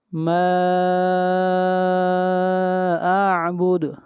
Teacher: ما کے اوپر مد منفصل، اس کو 3 الف کے برابر کھینچ کر پڑھیں گے.